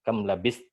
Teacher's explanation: Di ta ini huruf ta jangan sampai hilang sifat syiddahnya ya. Kam labis kalau hilang sifat syiddahnya dia akan nyampur berserikat dalam sifat.